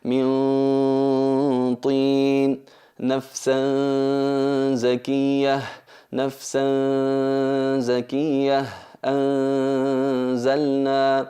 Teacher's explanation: se escucha la nasalización totalmente clara, pero disimulando el sonido de la N, disimulando el cuerpo de la letra en sí. Eliminamos el cuerpo y eliminamos la articulación de la letra y mantenemos su sonido, que es la característica que le acompaña. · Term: disimulación